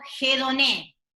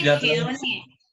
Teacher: en el griego es como si pongo una aspiración, estoy aspirando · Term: espíritu áspero